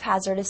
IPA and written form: ˋhæzɚdəs (hazardous)